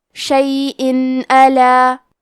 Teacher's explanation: اظہار کا معنی ہے ظاہر کرنا، اور کیونکہ تنوین کی اصلیت نون ساکن ہے تو ہم یہاں تنوین ظاہر کریں گے اور اسے نون ساکن پڑھیں گے اور بغیر غنہ سے یہ حکم کو ادا کریں گے